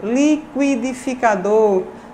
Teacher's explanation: uma sequência de oclusiva velar, mais um glide, seguido da vogal, que é o núcleo da sílaba. Qui, né?